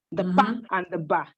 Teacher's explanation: the bilabial plosives, the pa and the ba. The 2 lips come in contact. So that's the manner thereof is the articulator there is the lip, the upper and the lower lip coming in contact.